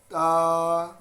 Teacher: زبان کی نوک کو اوپر والے دو جو دانت ہیں اندر کی سائڈ سے، جو دانتوں کی جڑ ہے وہاں پہ لگا کے ادا کرنا ہے